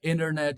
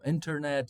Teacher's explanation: in North American, English accent, they don't really pronounce the T that comes after an N. Normally, they just say it like without it.